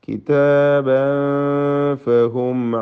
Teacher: തൻവീനിനെ ഇഖ്ഫ ഹഖീഖി നൽകി അവ്യക്തമാക്കി മണിക്കണം.